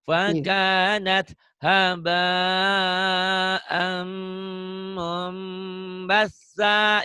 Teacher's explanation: Amnya ditahan sedikit, iklab.